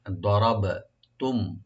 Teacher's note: এতে মিম সাকিন এখানে জাহার হবে, দরাবতুম এখানে গুণা হবে না